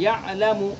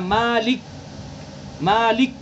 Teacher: हमने जब इसको साकिन किया मालिक को, तो जमाव इसके अंदर पैदा हो गया। इसके मुकाबले में यअलमु के मीम में जमाव पैदा नहीं हो रहा, जल्दी से अदा हो रहा है यअलमु। और यहाँ मालिक, मालिक, जमाव पैदा हो रहा है।